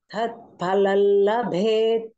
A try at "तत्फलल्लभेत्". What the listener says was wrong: तत्फलल tat is not महाप्राण तत्फलल्लभेत्